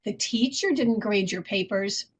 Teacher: the word teacher is in italics and it would be spoken with a rise fall intonation pitch contour